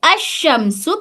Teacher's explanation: اس لام کو نہیں پڑھ کے شین میں کر دیں گے